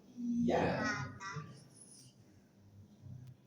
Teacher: Kemudian ya, dari tengah lidah ditekan ke langit-langit di atasnya